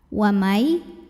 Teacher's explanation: cara bacanya nun sukun dileburkan ke ya masuk ke Ya wamai sambil didengung yang berikutnya di sini ada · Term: idgham bighunnah, idgham bi gunnah